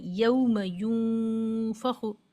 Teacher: مطلب یہاں پر نون ساکن کو ہم چھپا رہے ہیں، یعنی زبان کی نوک اوپر نہیں لگا رہے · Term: اخفائے حقیقی